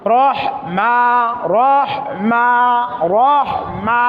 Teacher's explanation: জবর খারা জের উল্টা পেশ হলে এক আলিফ টেনে পড়তে হয় এখানে মা এক আলিফ টান হবে